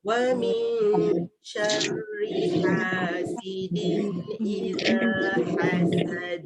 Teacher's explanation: Dan ayat akhir ni ada huruf yang berisiko juga, iaitu huruf ha pedas. Ada dekat hasidin, ada dekat hasad. Pastikan bunyinya tu dipedaskan.